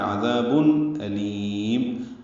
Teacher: حمزہ اقصی حلق سے، اس کی جہر کی صفت ہے، واضح طور پر ادا ہو، لام باریک ہے، لام کو لمبا کریں گے، اور میم ساکن پہ وقفاً اظہار شفوی ہے۔